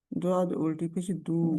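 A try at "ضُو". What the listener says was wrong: दू। अब दू कहेंगे तो दाल बन जाएगा।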